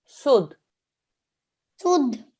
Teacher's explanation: because this is a mushaddad dal, it's not a noon, it's not a meme. We don't do any nasal sound. We just do the simple join and we stay with the simple join.